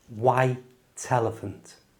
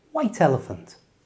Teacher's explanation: Again, you can use linking to sound more natural. Just move the T from the end of white over to the front of elephant. So, it becomes white elephant and a full speed white elephant.